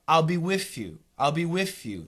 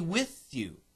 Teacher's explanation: some people might pronounce the th like an F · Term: F sound